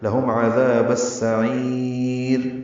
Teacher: عین وسط حلق سے ادا کریں گے، را باریک پڑھیں گے ، وقفا وصلا، لہم عذاب السعیر، اور عین کو لمبا کریں